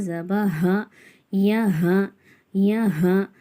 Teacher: சொல்லணும் மல அ மல அ யா ஜப ய ஹா இது வந்து தடிமனான அடி வயித்துல இருந்து அடி தொண்டையிலிருந்து வர்ற ஹா